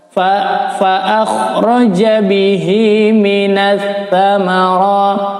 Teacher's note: Ma'aun, tanwin bertemu fa adalah ikhfa. ma'an fa akhraja, kha-nya terjelas di tenggorokan, fa akhraja bihi minas thamara, menggunakan huruf ta ya, minas di ujung lidah, bukan minas ya.